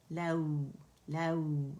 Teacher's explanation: لام کے لیے آواز اوپر جائے گی ایک کاؤنٹ کے لیے، اور پھر نرمی سے ہم اسے واو سے ملائیں گے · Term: واو لین